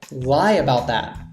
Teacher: this t because it's before a th sound isn't pronounced